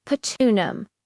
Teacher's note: you'll hear that beautiful rising pitch, especially on the final syllable